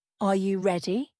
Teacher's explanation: Your voice goes up at the end because it's a question. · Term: intonation